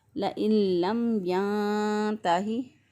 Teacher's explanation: اب پھر میم ساکن کے بعد دیکھیں نہ با ہے اور نہ ہی میم ہے، لہذا یہاں پہ میم کی آواز کو ظاہر کیا ہم نے، واضح کر کے پڑھا